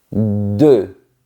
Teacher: tu projettes tes lèvres et ta langue touche les dents du bas.